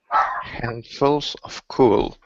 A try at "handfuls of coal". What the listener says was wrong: Okay, instead of cool, you're switching the oo and the o. You're saying cool. Instead of cool, it's coal.